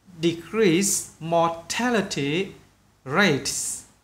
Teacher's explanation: More kéo dài bạn nhé, bởi cái or này.